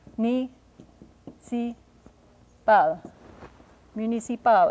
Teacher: Municipal, accent on the last syllable, as it usually is in French. · It's a front rounded vowel, u, not u, but u.